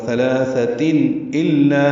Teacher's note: ثلاثہ دونوں ثا نرمی سے ادا ہوں گے، لام باریک پڑ جائے گا. تنوین کے بعد حمزہ ہے تو اظہار ہوگا